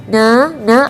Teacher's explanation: ada getaran di bagian rongga hidung